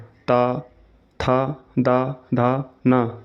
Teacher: त वर्ग के सभी पांच वर्णों का उच्चारण करते समय जीभ ऊपर वाले दांतों को अंदर से स्पर्श करती है। इसलिए इन ध्वनियों को दंत व्यंजन कहा जाता है।